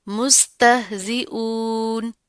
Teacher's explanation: اور یہاں پر حمزہ کے اوپر پیش آ رہی ہے، اس حمزہ کو آپ نے عین میں تبدیل نہیں کرنا، مستہزئون اون اس طرح نہیں کرنا، سمپل ہم حمزہ کی آواز کو پڑھیں گے.